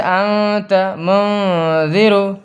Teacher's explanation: اس کے بعد تنوین اور نون ساکن کے بعد ان 15 حرفوں میں سے کوئی ایک حرف آئے تو نون کی آواز کو ظاہر کر کے نہیں پڑھیں گے، چھپا کے پڑھیں گے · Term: اخفا